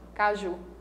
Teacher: Se fosse caju, a sílaba mais forte seria K, mas a palavra é caju, então a sílaba mais forte é a última